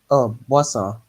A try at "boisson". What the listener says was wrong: Boisson is fine.